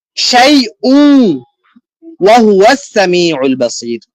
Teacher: ইদগাম মানে একটার একটার ভিতরে ঢুকিয়ে দেওয়া। তো এই তানবিনের পেশ এই ওয়াও এর ভিতরে ঢুকে যাবে।